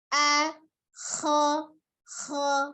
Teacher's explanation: Suaranya hanya dari pertama hamzanya dari tenggorokan bagian bawah, kho-nya naik ya di tenggorokan bagian atas. Jadi tidak ada perubahan di bentuk mulut.